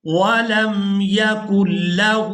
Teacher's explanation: یہاں پر ہم نے کاف کو لام مشدد کے ساتھ ملانا ہے، نون ساکن کو ہم نے چھوڑ دینا ہے